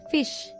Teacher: May undergo tensing and be realized as tense E before palato-alveolar fricatives. 이제 lex E가 직영국의 마처럼 앞에서는 tense E로 발음되는 그런 현상이 일어날 수 있는 거죠.